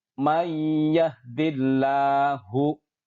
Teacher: Perhatikan, di situ ada nun mati bertemu dengan iya. Maka kita leburkan nun matinya ke huruf idgham di depannya yang berupa ya dan dibaca dengan mendengung. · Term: idgham bi ghunnah